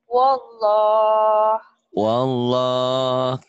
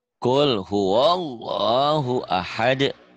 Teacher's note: Maksudnya kalau di wasal, kalau disambung alif-alif atau hamzah itu tidak dibaca. Ini membaca lafadz Allah tebal ya.